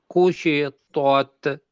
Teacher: شین ش کو سیٹی کی آواز میں پڑھنا ہے، را را کو کو موٹا پڑھنا ہے اس وجہ سے کہ اس کے اوپر زبر ہے۔